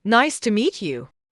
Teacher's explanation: Another important pronunciation point is stress. English speakers stress the key words nice to meet you. Try clapping your hands on nice and meet.